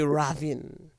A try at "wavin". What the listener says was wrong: Just put the W and just say Wavin. You have to understand the nuances of the local dialect.